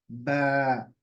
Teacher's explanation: इस आवाज के अंदर थोड़ी सी सख्ती है शिद्दत है